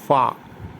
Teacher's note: பல் முன்பல் கீழ் உதடு ஒட்டி சொல்ல வேண்டும்